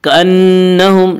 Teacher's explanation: कअन्नहुम, नून मुशद्दद गुन्ना होगा, गुन्ना की मिकदार 1 अलिफ है।